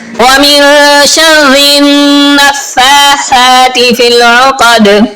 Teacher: شَرِّ النَّفَّاثَاتِ نون پہ غنہ کریں گے، یعنی آواز کو ناک میں لے جا کر پڑھیں گے